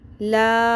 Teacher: یہ 3 الف کے برابر کھینچنی ہے چھوٹی مد ہے